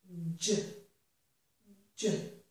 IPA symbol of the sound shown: dʒ